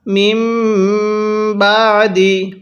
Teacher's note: সাকিনটি থাকবে সেটিকে বাদ দিয়ে মিমকে মিমের সাথে লাগিয়ে গুন্নাহ করবেন কারণ মিম সাকিনের পরে বা থাকলে সেখানে গুন্নাহ করতে হয়